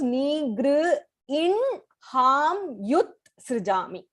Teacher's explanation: This exception is only when in the udaram, which is the stomach of hakaram, there is a nasal consonant, na anunasika aksharam. You say the anunasika aksharam, the nasal consonant first, and then you say the hakaram, ha. So it becomes nigr in ham yut srijami.